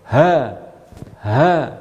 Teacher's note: Di pangkal tenggorokan kita ada huruf hamzah dan huruf ha.